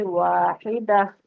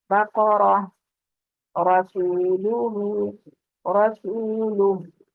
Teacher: گول تا جو ہے اس کو ہائے ساکنہ میں بدلا جاتا ہے، یعنی گول تا جو ہے اس پر وقف کرتے ہوئے ہم نے اس کو تا نہیں پڑھنا بلکہ ہا پڑھنا ہے، اور ہا بھی ساکن حالت میں۔